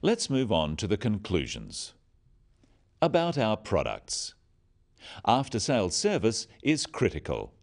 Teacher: note the downward intonation at the end of sentences